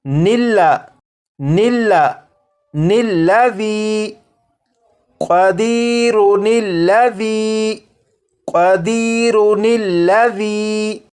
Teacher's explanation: حمزہ ہے اسے نہیں پڑھیں گے بلکہ نون کو لام کے ساتھ ملا کر پڑھیں گے